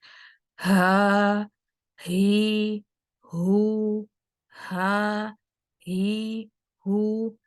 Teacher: हम हा भी उसी जगह से ही अदा होता है, इसमें भी हमारा वोकल कॉर्ड इन्वॉल्व होता है, लेकिन इसमें यह है कि वोकल कॉर्ड को हमने बंद करके आवाज़ नहीं निकालनी, बल्कि वोकल कॉर्ड को खुला रखते हुए आवाज़ निकालनी है। · आप ये चीज़ नोट करोगे कि हा के साथ एक वाफ़िर मिक़दार में साँस जारी होती है।